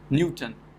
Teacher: so first syllable is stressed